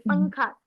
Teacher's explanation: तो पंखा में नून कहाँ जा रहा है, नाक में जा रहा है, छुपा पंखा।